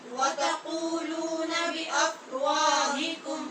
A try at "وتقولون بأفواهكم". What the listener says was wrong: وا نہیں بولیں. وتقولون بأفواهكم.